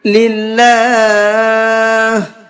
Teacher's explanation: اللہ کے لام کو باریک کر کے پڑھیں گے، اس لیے کہ اللہ کے لام سے پہلے زیر ہے، اور اللہ کے لام سے پہلے زیر ہوتا ہے تو اس اللہ کے لام کو باریک کر کے پڑھتے ہیں۔